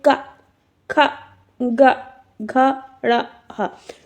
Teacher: ये आपके कंठ यानी कि गला जो होता है आपका गले से बोले जाते हैं जैसे का आप बोल के देखेंगे क ख ग घ ण